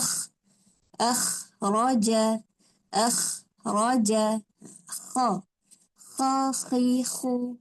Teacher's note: Kha sama tempat dengan ghin. Tapi dia bawah sikit daripada ghin. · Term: huruf kha